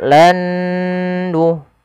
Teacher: huruf nun yang pertama dimasukkan kedua dan ditahan dengan gunnahnya sepanjang 2 harokat. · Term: idgham bi gunnah